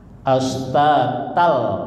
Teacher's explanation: dalam kaidah tajwid namanya idgham bila gunnah. Melebur masuk tanpa gunnah. Jadi harokat fatahainnya itu tal melebur ke lam ya.